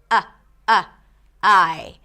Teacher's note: You're not saying hi. A lot of times you're adding a little glottle stop.